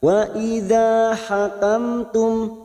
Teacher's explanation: wa fathah bertemu Alif dua harakat